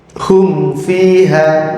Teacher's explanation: Nas alam kaia Jadi enggak boleh mimnya didengung didengungkan pengucapannya Adah mim harus tampak jelas tanpa Gun tanpa gunah ketika bertemu dengan huruf Fa · mim sedikit pun tidak boleh terpengaruh makhrajnya fa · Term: izhar syafawi, idhar syafawi